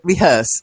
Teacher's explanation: So the stress is more on the hearse bit.